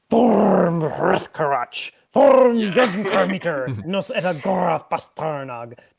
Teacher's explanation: the Dwarvish is much more guttural, much more a lot of sounds using the uvula in the back of the throat